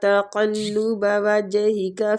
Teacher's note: تقلب قاف ادھر بھی مستعلیہ حروف ہے، وجہی کا جیم ساکن ہے تو اس پہ قلقلہ کریں گے